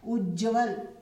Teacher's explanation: त के सामने ज होने पर त को ज हो जाएगा